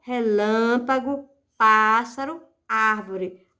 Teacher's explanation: a antepenúltima é a sílaba tônica não é a última não é a penúltima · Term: proparoxítona